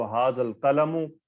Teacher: This alif will be written, but it will be silent. So nothing will hear, only one sukoon. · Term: hamzatul wasl